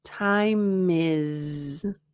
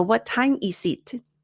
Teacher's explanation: Now, here, notice that there's another linking opportunity. If you don't practice the pronunciation of the S as a Z, it's also going to impact how you link it.